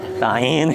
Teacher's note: Ta biasa fathah, ta ketika in rahang turun, ta'in ya.